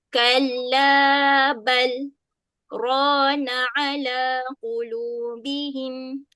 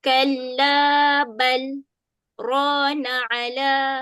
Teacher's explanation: Macam ni dia duduk lepas perkataan bal tu. Okay, jadi cara nak baca dia adalah kita tahan nafas dekat bal tu. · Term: saktah